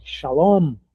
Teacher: A sílaba final é a mais forte. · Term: oxítona